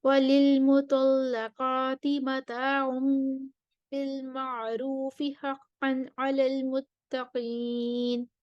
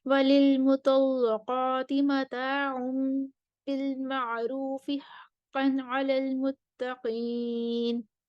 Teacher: للمطلقات پر ورش کے لیے تغلیظ اللام ہے